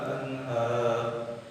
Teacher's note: nun mati bertemu hak besar, termasuk huruf idhar atau huruf yang ada di tenggorokan mahrotnya.